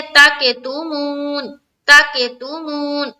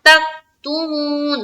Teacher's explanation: تک میں جب تا کو کاف سے ملائیں گے نا تو ہماری آواز اسٹاپ ہو جانی چاہیے